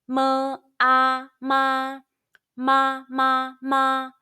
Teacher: Let's combine the initial M, the final A, and the high-pitched first tone all together.